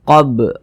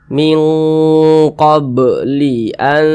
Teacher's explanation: Huruf ba termasuk salah satu huruf qalqalah, maka dipantulkan qab. Nah, dan ini termasuk kepada qalqalah sugro karena dia berada di tengah bacaan.